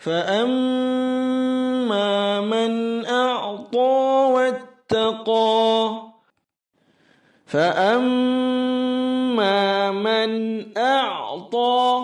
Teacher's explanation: huruf fa ada hamasnya lembut, ada anginnya fa